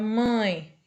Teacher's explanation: quando o som ele não sai apenas pela boca né ele fica preso pelo nariz e sai um pouco do ar pelo nariz · Então, por exemplo, na palavra mãe, esse quando a gente pronuncia, o A ele fica preso, né? Na cavidade nasal. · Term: som nasal, ditongo nasal